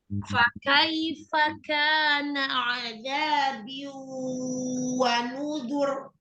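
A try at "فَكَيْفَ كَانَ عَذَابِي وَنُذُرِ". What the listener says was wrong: Oh, betul, enggak ditasdid. Bi atau bi ya. Bukan tasdid waw. Azabi wa nuzur. Bi saja. Biwa.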